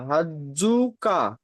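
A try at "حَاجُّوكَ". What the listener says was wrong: এখানে এখানে হাজ্জু বলে এত সহজ তাড়াতাড়ি পড়ে দিলে হবে না। হা বলে এখন পাঁচ আলিফ পরিমাণ টানেন।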